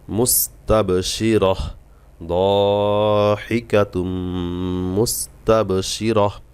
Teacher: গোলতা আছে গোলতায় হা সাকিন করে থামতে হবে